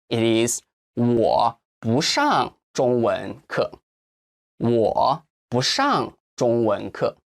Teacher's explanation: this bu is the fourth tone but when i was reading it it was the second tone